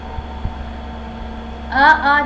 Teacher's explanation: आ जो है वो क्या चीज से बोला जाता है, कंठ से बोला जाता है।